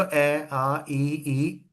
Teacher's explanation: अवृत्ताकार जिसमें आपके लिप्स क्या होंगे? मतलब एक तरीके से इलिप्स की फॉर्म में होंगे।